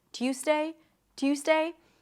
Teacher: And then it's a Z sound, Tues, not an S, Tuesday, Tuesday, Tuesday. However, sometimes people might devoice the Z sound and it might sound closer to an S